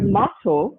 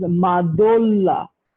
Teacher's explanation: Again, for the word mato, which is worm, and the worm has becomes madolla. So madolla from mato is again the voiceless sound is becoming a voiced sound. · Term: lenition